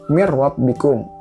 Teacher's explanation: jadi diganti yang tadinya N jadi R karena setelahnya huruf ro. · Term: idgham